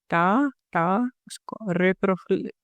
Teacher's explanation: retroflex sounds, como la lengua hacia arriba